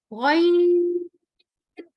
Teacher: गौइन जो है हलक के सबसे ऊपर वाले हिस्से से अदा होता है खौ के साथ। गौइन, इसमें भी या और नून लिखने में आ रहा है तो पढ़ने में भी आएगा।